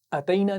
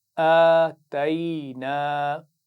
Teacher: ہے، آتینا، اتینا نہیں پڑھنا، شروع میں آپ دیکھ رہے ہیں کھڑا زبر ہے تو اس کو کھینچ کر پڑھیں گے الف مدہ کی طرح